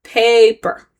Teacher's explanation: Pay is where the stress is because that's where your chin naturally falls lower